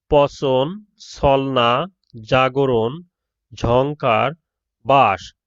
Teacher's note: জিভ প্রসারিত হয়ে সামনের অংশ শক্ত তালু স্পর্শ করে উচ্চারিত ধ্বনিগুলো হলো তালব্য।